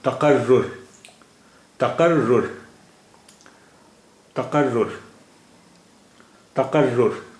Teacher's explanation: there is tashdeed over re, so ra sound will be produced twice